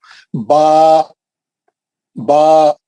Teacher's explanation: इसकी मकदार 2 हरकत। इसको जरा लंबा करना, 2 बार उंगलियां खोल के बंद करने के उतना खींचता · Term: खड़ा जबर